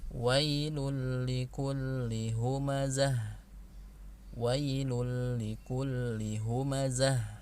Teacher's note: Namun ini pengecualian kalau setelah nunnya ketemu huruf lam atau setelah tanwin ketemu huruf lam, ya, maka tidak dibaca gunnah, jadi hanya ditasdidkan